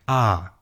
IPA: a